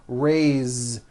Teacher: it is spelled with an S, it's pronounced with a voiced Z. Raise. So we say I raise with a voiced Z ending, and he raises.